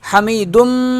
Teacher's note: میم پہ بھی غنہ کریں گے